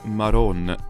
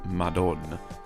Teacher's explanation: in Neapolitan, the D sound between vowels can become a R, that's an alveolar tap